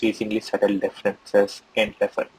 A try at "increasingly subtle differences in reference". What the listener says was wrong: So you got to get just a little bit faster than where you are right now.